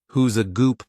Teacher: they took the word good and replaced the D with the first letter of a word that followed